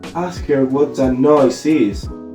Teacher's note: the nucleus falls on noise, the last content word, not on her or is.